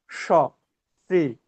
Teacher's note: আমার তালব্য ষ বলবার সময় আমার জিহ্বাটা একদম উপরে উঠে যাচ্ছে, তালুটা উঠে যাচ্ছে। · আমরা যখন তালব্য ষ উচ্চারণ করব, উপরের প্লেট এই তালু থেকে উচ্চারণ করব